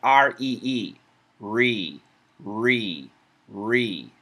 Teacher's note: the r does not touch the top of the mouth the roof of the mouth specifically the alveolar Ridge the tongue doesn't touch